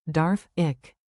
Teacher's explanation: Say Darf. with a clear F, then the soft German Ich. sound, like air slipping over your tongue.